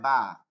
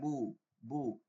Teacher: আপনাকে নিতে হবে ঠোঁটের কোনো একটা হরফকে সাহায্য নিতে হবে, সেইটা কি, ঠোঁটের ভিজা জায়গা থেকে হয় বা, বা উচ্চারণ হয়